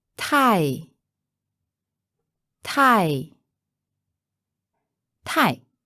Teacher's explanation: that's fourth tone remember it by thinking your tie is too long